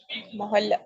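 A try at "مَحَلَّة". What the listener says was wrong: मीम के ऊपर जबर बोलेंगे, ठीक है? महल्ला, ठीक है?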